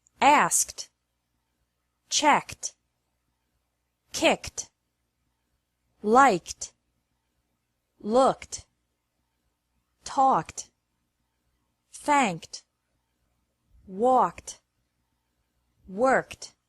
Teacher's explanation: Ed is pronounced like T after verbs ending with a k sound